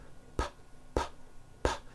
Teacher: your vocal cords are not producing a sound so therefore the P sound is what we call unvoiced